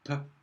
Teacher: if we close our mouth, like in p, and then just open it so that we get a very strong release in one go